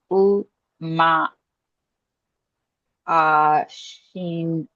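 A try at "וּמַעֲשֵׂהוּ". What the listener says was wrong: Umaasehu. It's a sin dot on the left. Maasehu.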